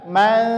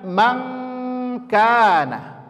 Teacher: Jadi nggak renggang ya, nggak renggang, langsung nempel. Maka bunyinya adalah eng. Setiap nun sukun ketemu kaf.